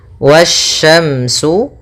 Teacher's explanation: yang mana alif lam dan Alif dan lamnya tertulis akan tetapi Alif dan lamnya tidak dibaca sehingga kita langsung baca ke huruf setelahnya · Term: alif lam syamsiah